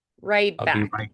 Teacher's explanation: Like I don't really even necessarily do the T. · It's almost like I close to like a D and then I just kind of go straight to the B. And I ali them all together like be right.